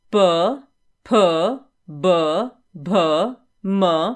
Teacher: जिन वर्णों का उच्चारण ओष्ठ से होता है उन्हें ओष्ठ्य कहते हैं।